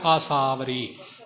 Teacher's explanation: ਸੱਸੇ ਦੇ ਕੰਨੇ ਨੂੰ ਥੋੜਾ ਲਮਕਾ ਕੇ ਆਸਾਵਰੀ ਪਾਠ ਇਕੱਠਾ ਕਰਨਾ। ਆਸਾਵਰੀ ਇਉਂ ਬੋਲਣਾ ਆਸਾਵਰੀ।